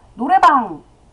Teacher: 이 노래방의 그 방은 그 비읍의 소리가 유성음이 됩니다. 그래서 노래의 그 모음 뒤에 오는 비읍 소리가 유성음이 되어서 외국인 입장에서는 쌍비읍이 유성음처럼 들리기 때문에 빵이라고 들리는 거죠.